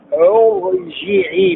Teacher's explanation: يفخم حرف الراء بعد همزه الوصل